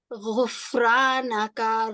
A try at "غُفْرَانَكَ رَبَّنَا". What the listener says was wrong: کیا کو کھینچنا نہیں ہے؟ نہیں، ابھی بھی آپ کھینچ رہے ہیں، کا کر رہے ہیں. غفرانک ربنا.